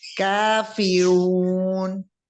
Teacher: रा को मोटा करते हुए नून के मखरज पे रुक जाए।